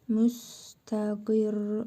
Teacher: ra hərfini vurğulu tələffüz, şəddəli və vurğulu tələffüz edirik.